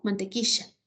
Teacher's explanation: pronunciar la e como ye mantequilla en lugar de decir mantequilla ya no es lateral muchos lo pronunciamos como fricativo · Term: yeísmo